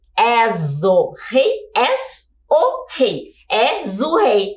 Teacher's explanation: o O a gente acaba pronunciando de uma forma muito próxima do U